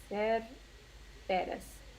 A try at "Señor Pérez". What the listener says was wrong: Señor. SR is the diminutive of señor. The short way. So it's Señor Pérez.